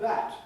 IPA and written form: bæt (bat)